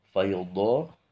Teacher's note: bacaan do ini pinggir lidahnya itu harus nempel di gigi geraham yang atas, baik yang di kiri maupun yang kanan. Ini untuk membedakan bacaan dengan do kemudian dal ya.